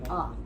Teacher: the sound sounds like short U, but it's a schwa sound